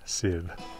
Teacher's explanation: Now I say her name like that because an F that does not begin a word in Old Norse is pronounced as a V